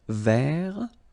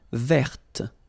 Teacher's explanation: masculine form, don't pronounce the final T